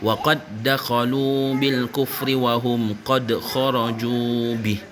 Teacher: Qad yang kalimah pada kedua tu qad kharaju bih barulah ada bunyi qalqalah.